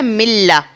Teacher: نون ساکن کے بعد لام آ رہا ہے، ہم نے ادھر غنہ نہیں کیا، ادھر پڑھا ہے ملا.